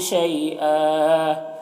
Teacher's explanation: دو زبر ہے، وقف کی صورت میں ایک زبر کے ساتھ الف پڑھیں گے · یا لین سے نرم آواز کے ساتھ جلد پڑھیں گے